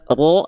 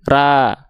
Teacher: Kalau pangkal lidah kita gak naik, bunyi vokalnya akan bunyi vokal A, bukan ro tapi ra. Kenapa? Karena pangkal lidahnya gak naik.